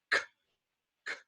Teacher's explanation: When you make a K sound, k, k, the tongue touches that soft palate. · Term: velum